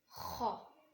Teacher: खा कहाँ से अदा होता है, अदना हलक से।